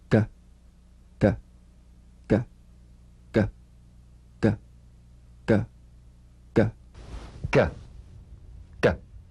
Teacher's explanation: the voiced tongue back plosive consonant G place the back of the tongue in gentle contact with the